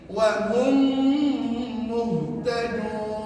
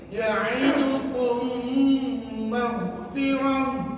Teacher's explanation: Hanya perlu gunakan bibir dan puan-puan dalam masa yang sama kena bunyi sengau dalam rongga hidung kita selama dua harakat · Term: idgham syafawi